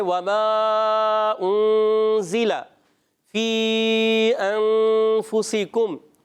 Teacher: مد متصل اور مد منفصل کو 2 2.5 الف یعنی 4 یا 5 حرکات کی مقدار تک کھینچ کر پڑھیں گے